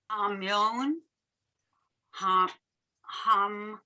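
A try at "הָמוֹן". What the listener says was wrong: So there's no yud here. So you did it right the first time. Ha-mon.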